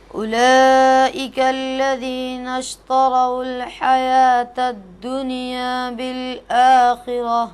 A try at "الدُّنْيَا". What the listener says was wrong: یہ نون جو ہے قلقلہ والوں میں سے نہیں ہے، دنیا نہیں پڑھیں گے، دنیا دنیا.